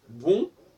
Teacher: dans bon, il n'y a pas vraiment le N, même s'il y a une forme de diphtongue, etc., mais ce n'est pas le N.